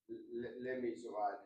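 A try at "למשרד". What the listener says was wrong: Not le, la Misrad. What's underneath the lamed when you say la Misrad? Which one would you think it is?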